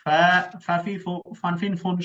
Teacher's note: 1 number ফা ফা, তাই না? সামনের জি উপরের দাঁত, নিচের ঠোঁটের পেট, বাতাস চালু